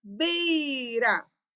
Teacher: porque a sílaba tônica é o bei